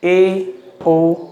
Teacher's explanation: अर्धसंवृत स्वर, जिन स्वरों के उच्चारण में आधा मुंह बंद रहता है